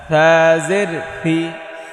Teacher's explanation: জিব্বার আগা সামনের ওপরের দুই দাঁতের আগায় লাগিয়ে থা, নরম থা